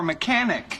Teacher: In this case, the accent is in the second syllable, corresponding to con.